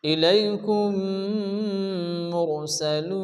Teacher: মিম সাকিনের পরে যদি কি আসে, আবার মিম আসে তাহলে মিমের সঙ্গে মিমকে মিলিয়ে গুণসহ পড়তে হয়। আমরা পড়ব হামজা জের ই, লাম ইয়া জবর লাই, ইলাই। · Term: ইদগামে শাফাবি